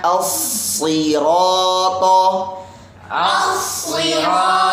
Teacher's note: Nah itu ro sama to kan tebal. Ketika menebalkan jangan sampai monyong.